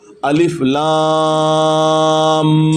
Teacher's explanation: اب یہ جو میں لفظ نکال رہا ہوں نا، آواز الف لام، ناک میں آواز کو ہولڈ کر رہا ہوں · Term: شد